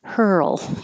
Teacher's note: keep making sound and that's the earl part hurl hurl and hold your tongue in the l position for a little longer so you can hear the l noise